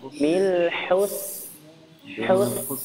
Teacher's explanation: Hus bisa jadi tebal Hus tapi ditarik hus hus ya kemudian sinnya juga enggak boleh dikantulkan ya dialirkan nafasnya